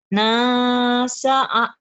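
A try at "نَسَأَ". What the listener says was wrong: nasa'a, jangan kain ya, nasa'a ini alif ya, hamzah bukan ain, bukan nasa'a, nasa'a ya biasa.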